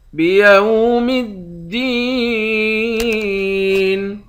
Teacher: دال کو یا کے ساتھ ملا کر یا کو ایک الف کے مقدار کھینچ کر پڑھیں گے، یا حروف مدہ ہے، آخر میں نون ساکن ہے۔